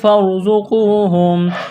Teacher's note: قاف کو موٹا کرنا ہے، واو ساکن سے پہلے پیش ہے، واو مدہ ہے، ایک الف کے برابر کھینچنا ہے